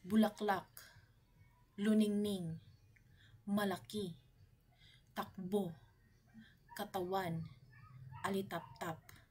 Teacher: mabilis ay binibigkas ng mas mabilis kumpara sa malumay o malumi wala itong impit o pagkaantala sa dulo kaya ang buong salita ay binibigkas ng mabilis mula simula hanggang katapusan